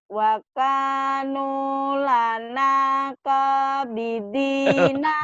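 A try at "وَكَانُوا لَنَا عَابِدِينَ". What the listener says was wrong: Bukan kok Bu, ini A. Wakanu lana abidina. Wakanu. Sama kan Bu, cuman ditekan aja. Saya lebih penekanan.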